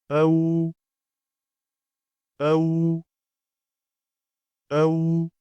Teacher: ዋው ፊደልን በምናነብ ጊዜ ሁለቱ ከንፈሮቻችን ወደ ውጭ እንደሚሰበሰቡ ነው።